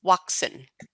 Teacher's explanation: he said waxin with like a W pronunciation instead of a V